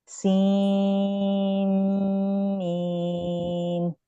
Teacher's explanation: سین میم, نون کی ساؤنڈ چلی گئی ہے, سین اور میم شدہ ہے تو ہم کی ساؤنڈ ہوگی, اور پھر میم کو 6 کاؤنٹ, تو سین میم, ٹھیک ہے. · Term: ادغام